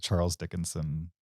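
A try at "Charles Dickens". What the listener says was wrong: Dickens. You threw an extra, so yeah. You made a Scandinavian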